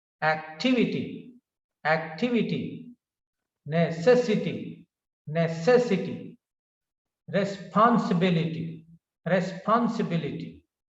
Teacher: in the words ending in ity the primary accent is on the syllable immediately preceding the suffix